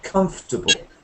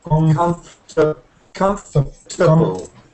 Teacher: the little one between com and fur is too quiet so quiet that you can throw it away